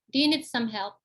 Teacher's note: pronounce in flat intonation, ya, it means that it is a rhetorical question when you know that the person needs help, but you need to be polite.